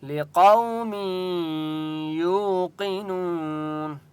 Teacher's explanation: واو مدہ ہے، یا کو ایک الف کی مقدار کھینچ کر پڑھیں گے